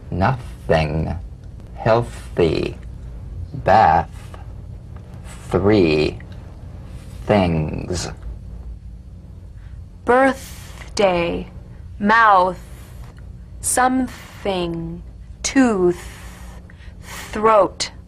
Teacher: The unvoiced tongue point to teeth fricative consonant. Play this dry, gentle, whispered lightly and softly without the slightest pressure. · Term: voiceless th